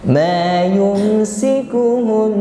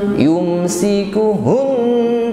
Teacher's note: Nun bertasydid ditahan sampai berdengung, namun tidak perlu ditekan, ya. Yumsikuhun tidak, ngalir saja.